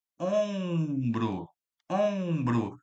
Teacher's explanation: O M está nasalizando o O.